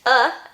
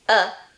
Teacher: uh as in Strut goes in the stressed syllable and uh as in comma goes in the unstressed syllable